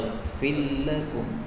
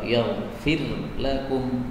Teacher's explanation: Kalau ketemu dengan huruf lam, ini boleh idgham. Yaghfir lakum, ra-nya hilang menjadi lam dalam bacaan Quran.